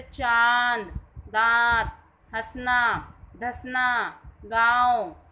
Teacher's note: अनुनासिक, इसका उच्चारण नाक और मुंह से होता है। जैसे चांद, दांत, हंसना, धसना, गांव आदि।